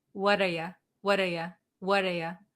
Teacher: instead of saying you, we're going to pronounce it as ya.